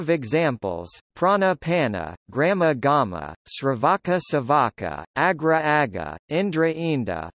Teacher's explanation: r and l assimilate to a preceding stop, nasal, sibilant, or v